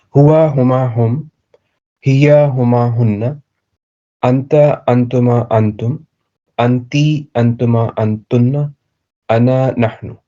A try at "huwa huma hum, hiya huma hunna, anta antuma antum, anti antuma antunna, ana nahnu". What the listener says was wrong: MashaAllah. Very nice.